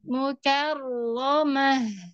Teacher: Huruf ro punya sifat takrir. Ketar ya, ketar. Tapi ketarnya nggak banyak. Nggak sampai rrr, banyak ya.